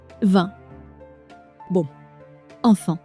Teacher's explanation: The air flows through your nose. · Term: nasal vowels